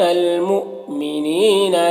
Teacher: حمزہ ساکنہ ہے، واو کی شکل میں جھٹکا لگے گا